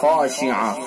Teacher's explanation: خا بھی پر، الف بھی پر